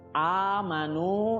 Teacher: nah a ini namanya adalah mad badal, panjangnya sama 2 harokat.